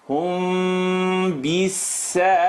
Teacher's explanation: When mim sukoon is followed by ba, the lips vibrate.